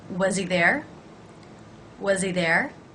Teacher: i want to make sure that i really link things so i'm actually going to almost think of the Z sound as beginning a word · I'm going to drop the H, reducing the word he. And because I'm going to do that, I want to make sure that I really link things.